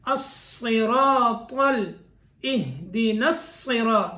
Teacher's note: صاد موٹا، را موٹے حروف میں کیونکہ اس کے اوپر زبر آ گئی تو موٹا ہوگا